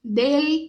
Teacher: ponta da língua vai lá no céu da boca é bem marcada